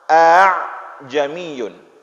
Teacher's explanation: ain keluar dari tengah tenggorokan. Karena sangat berdekatan huruf-huruf ini, maka sulit dibaca.